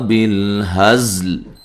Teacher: بالہزل زا کو سیٹی سے ادا کرنا ہے اور لام کو بھی ساکن کرنا ہے وقف کی صورت میں